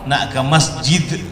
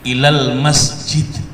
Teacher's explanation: orang itu belum sempurna mengucapkan kalimat masjid kalau tanpa ada qalqalahnya